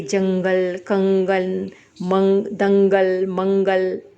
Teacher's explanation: अनुस्वार इसका उच्चारण नाक से होता है